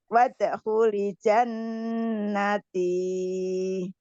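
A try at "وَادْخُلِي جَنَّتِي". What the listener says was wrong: Li-nya panjang, Bu. Wadkhuli panjang.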